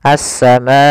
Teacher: maka dinamakan dengan mad wajib muttasil panjangnya adalah empat harakat